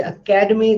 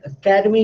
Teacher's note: When I say academy, then ka is stressed because something that is stressed is loud. Academy. Even if I say academy, you can hear ka is loud.